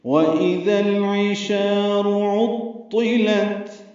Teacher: شا کو 2 حرکات لمبا کرنا ہے، را کو پر پڑھنا ہے لیکن جلدی پڑھنا ہے